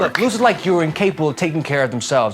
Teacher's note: dropping of R's, and replacing TH sounds with D are all very New York